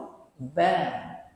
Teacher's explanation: Kalau nak laju, pastikan bacaannya laju dan tepat. Ba, huruf bibir, syafatain, dua bibir. Ba ni dia tak boleh moncong.